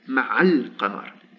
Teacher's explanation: So in this case, the vowel of liaison fatha has disappeared